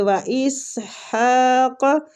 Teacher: ہا کو وسط الحلق سے نکالیں گے اور کھینچیں گے